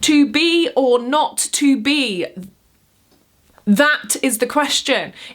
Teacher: One of the most famous lines, "To be or not to be, that is the question," is not iambic pentameter. That last foot is a bloody trochee.